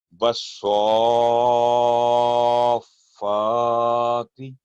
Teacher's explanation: سواد کو فا کے ساتھ جوڑیں گے لمبی آواز کر کے